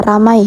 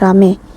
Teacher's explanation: perubahan dua bunyi vokal atau vokal rangkap atau biasa disebut dengan diftong menjadi vokal tunggal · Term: monoftonisasi